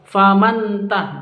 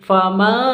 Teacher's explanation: tidak jelas non sukunnya, maka itu namanya samar. Tidak ke nonnya, tidak jelas ke non.